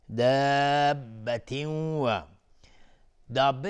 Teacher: مد لازم کلمه مثقل به مقدار 6 حرکت لازمه که مد داده بشه